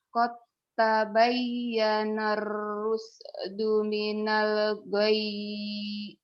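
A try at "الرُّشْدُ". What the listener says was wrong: itu udah bagus cuman tadi shinnya belum keluar. Qad tabayyana rush.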